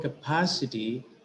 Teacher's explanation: it is the syllable pa which is receiving accent